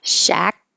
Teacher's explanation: you won't hear the final K